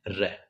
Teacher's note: जिन व्यंजनों का उच्चारण करते समय जीभ के ऊपर वायु लुढ़कती हुई बाहर निकलती है उसे लुंठित व्यंजन कहते हैं। और जो लुंठित व्यंजन है उसे प्रकंपित भी कहते हैं क्योंकि जिह्वा में कंपन होता है और ये एक ही है र।